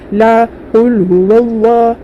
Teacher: लाम के ऊपर खड़ा ज़बर है, खड़ा ज़बर बराबर है अलिफ मद्दा के, 1 अलिफ की मिकदार खींचकर मारूफ पढ़ेंगे।